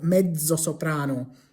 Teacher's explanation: In English, we say things like mezzo soprano, but in Italian, it wouldn't be pronounced like a TZ. It will be pronounced with a DZ.